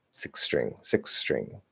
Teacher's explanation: we're gonna get a slightly longer s between uh six and string